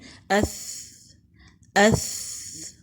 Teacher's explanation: زبان کی نوک سامنے کے اوپر کے 2 دانتوں کے سرے یعنی کنارے سے لگے گی اور ذرا باہر کو نکلے گی۔ ثا حروف ہمس میں سے ہے، یعنی مخرج پر جانے کے بعد ہوا جاری رہتی ہے۔